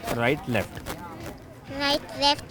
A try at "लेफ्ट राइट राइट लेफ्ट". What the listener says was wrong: हाँ नहीं, पहले लेफ्ट है। लेफ्ट राइट राइट लेफ्ट।